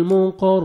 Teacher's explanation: مقر قاف کو موٹا کر کے پڑھیں گے